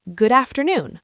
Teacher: The D from good connects to the A, so it becomes good afternoon. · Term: connected speech